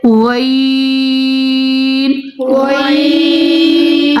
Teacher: غین اور خا غین خا یہ دونوں حلق کے اوپر والے حصے سے ادا ہوں گے